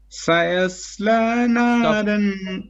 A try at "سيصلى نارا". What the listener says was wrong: Not the sin. Sin is flat. سيا. Okay. Sin and ya is flat.